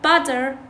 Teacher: الدا بالفلاب، يعني بدال التاء يقولوها دا أو حتى مرات را. This sound is produced by the tongue tip tapping the alveolar ridge briefly. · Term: flap